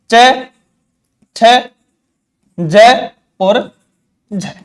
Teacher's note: ये तो है, ये तो है, ये तो है स्पर्शी, और ये क्या कहलाया, स्पर्श संघर्षी, यानी स्पर्श भी करते हैं और संघर्ष भी करते हैं · जीभ, तालु के निकट पहुंच गई और उच्चारण करते ही अलग हो गई